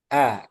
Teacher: Hamzah makhrajnya bawah tenggorokan aqs hal kemudian sifatnya jahar tidak keluar udara jadi a ditekan